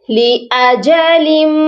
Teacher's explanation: لام کو میم مشدد سے ملائیں گے تو غنہ بھی کریں گے، کیونکہ میم مشدد پر ہمیشہ غنہ ہوتا ہے